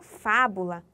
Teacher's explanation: fábula, já como a antepenúltima sílaba tônica. Então, eu vou classificar como proparoxítona.